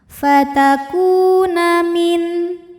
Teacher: Maka huruf kaf panjangkan dua harakat. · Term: mad thobi'i zohiri